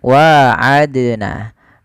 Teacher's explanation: bacaan qqalah juga sebenarnya yaitu di lafal Dal yang disukunkan ini ada bacaan Qalqalah yaitu bacaan yang harus kita pantulkan di dalam melafalkan hurufnya